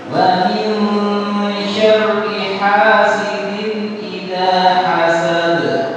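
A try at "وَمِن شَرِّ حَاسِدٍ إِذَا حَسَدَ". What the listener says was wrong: Ya, perhatikan setiap kalimat syarri ya itu ro-nya dibaca tipis. Jangan dibaca syarri tapi syarri. Wa min syarri. Syarri.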